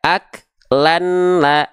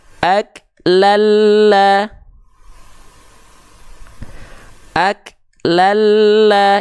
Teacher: bukan bukan dibaca ak Lan la tapi ak Lala ak Lala Jadi n-nya udah enggak ada karena sudah dileburkan ke mana sudah dileburkan ke huruf lamnya · Jadi n-nya udah nggak ada karena sudah dileburkan · Leburkan bunyi an di sini ke bunyi berikutnya yaitu lam lagi. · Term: idgam bilaguna, idgham bila gunnah